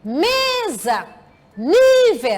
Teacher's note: Porque a sílaba tônica é a penúltima. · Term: palavras graves